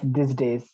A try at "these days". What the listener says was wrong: Okay, little more use stress these days.